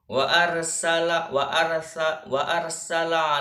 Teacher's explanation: suara tambahan yang keluar dengan kuat diantara ujung lidah dan gigi seri atas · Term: safir